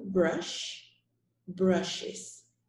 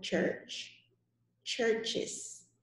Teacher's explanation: notice the difference between the sh which is sh and the ch which has a shorter sound